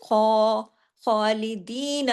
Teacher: ख heavy letter है खराश के साथ बोला जाता है · अब दी को हमने दो हरकत खींचा क्यों या की वजह से या मद्दा की वजह से